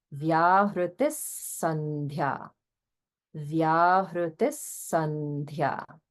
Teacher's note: Okay, and then again, holding on the visarga in Vyahritihi. And this visarga will be pronounced as a sa because of the following sa in Sandhya. So it becomes Vyahritis Sandhya.